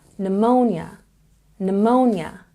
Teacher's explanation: we have a stress again on the second syllable